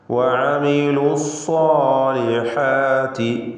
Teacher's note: വഅമിലു സ്സാലിഹാത്തി, സാ എന്ന തഫ്ഖീം ചെയ്തുകൊണ്ടുള്ള ശബ്ദം, ഇസ്തിഅലാൻ്റെ ഹർഫായ സ്വാദ്, ആ തഫ്ഖീം തടിപ്പിച്ചുകൊണ്ടുള്ള ശബ്ദം അതിൻ്റെ അലിഫിലും നിലനിർത്തണം. അലിഫും തഫ്ഖീമിൽ സ്വാദിനെ പിന്തുടരും.